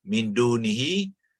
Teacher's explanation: Hukum ikhfa maknanya sembunyi. Jadi non ni disembunyikan di dalam makhraj dal, ya, dan dibaca di antara izhar dan idgham